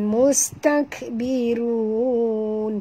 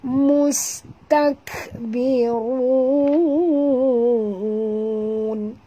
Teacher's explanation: jaga makhraj. Ra kena tebal